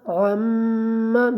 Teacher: میم مشدد ہے، میم کے اوپر آپ نے غنہ کرنا ہے۔ میم مشدد آ جائے یا نون مشدد، وہاں پہ آپ نے ہمیشہ غنہ کرنا ہے۔